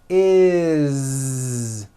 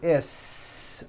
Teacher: It's never is, unvoiced, never. It's always is with a voiced Z.